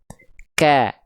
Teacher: Syiddah tuh artinya tertahan suaranya. Akhirnya dia berimpact ke nafas, jadi hanya berupa percikan nafas saja. · Karena dia bersandingan dengan sifat yang namanya syiddah. Tertahan suaranya, akhirnya nafasnya mau mengalir jadi cuma berupa percikan saja.